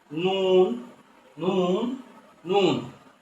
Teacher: জিহ্বার আগা তার বরাবর উপরের তালুর সাথে লাগাইয়া একটি অক্ষর, সেটা হলো নুন